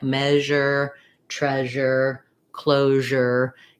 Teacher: think of that sh sound, but with a zh voicing instead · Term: zh sound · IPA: /ʒ/